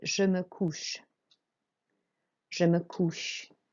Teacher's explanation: the OU is an OO sound. You really make a round motion with your mouth. You open all your mouth out.